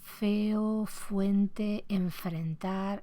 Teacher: la realización del alófono fricativo labiodental sordo, o sea, de la F normal